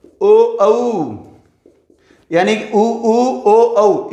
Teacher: ऊ, ओ, औ, इनको बोलेंगे तो हमारे होठों का आकार कैसे हो जाता है? गोल हो जाता है। इसलिए इनको कहते हैं हम वृत्ताकार स्वर।